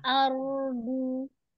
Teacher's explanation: Aranya tidak dipantulkan ya, tidak ardu, tidak are, tapi ardu, cuman dia mengalir aja sebagian ya, terus dia tebal ya karena roh sukunnya sebelumnya fathah.